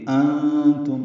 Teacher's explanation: انتم، نون ساکن و تان کی وجہ سے اخفا ہے، نون کی آواز چھپائیں گے، میم ساکن پہ اظہار شفوی ہے